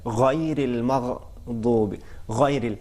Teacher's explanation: غائن جو ہے وہ ابتدائی حلق سے ادا ہوتا ہے